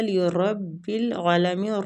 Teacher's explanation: را فتح کی وجہ سے پور پڑھیں گے، عین پہ کھڑی زبر ہے تو کھینچیں گے، عالمین۔